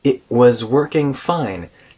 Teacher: glottal stop before the W in was